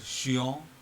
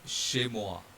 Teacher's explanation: Then CH in French always has a single sound. In English, of course, it is cha, but in French, it is always sha. In French, CH is always sha.